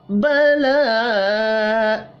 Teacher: لام کے اوپر کھڑی زبر ہے، ایک الف کے برابر کھینچ کر پڑھیں گے